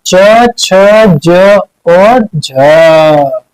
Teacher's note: इनको बोलने में हमारी जो जीभ है वो अगल बगल छूने के साथ संघर्ष यानी घर्षण उत्पन्न करती है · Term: स्पर्श संघर्षी